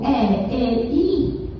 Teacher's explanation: eu estou aqui movimentando a ponta da minha língua em direção ao céu da boca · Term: movimentos anteriores